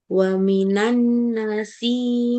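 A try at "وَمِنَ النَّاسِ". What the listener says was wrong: Wa minan nasi. Nanya kurang panjang.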